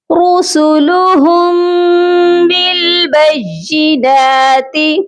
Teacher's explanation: رسول را بھی موٹا پڑھا جائے گا